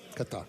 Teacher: That rolling R is tough. It's right in there. It's right in the middle.